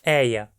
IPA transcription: ɛɪ̯a